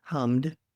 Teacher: If it ends in a voiced consonant like hum, then you add duh